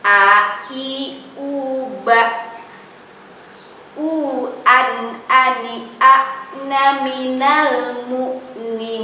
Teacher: ketika kita mengucapkan A, itu dari mana? Tenggorokan bagian bawah, ya. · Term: hamzah